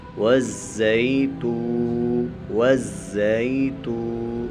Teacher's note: واو زا زبر غز، زا یا زبر زی، والزی تا واو پیش تو، والزیتو زا کے اوپر سیٹی بھی نکالیں گے، والزی، والزی تا واو پیش تو، واو ساکن ہے، اس سے پہلے پیش ہے تو یہ واو مدہ ہے، اس کو ہم تھوڑا سا کھینچیں گے